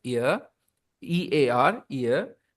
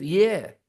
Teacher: The word EAR starts with a vowel sound, while YEAR starts with a consonant sound.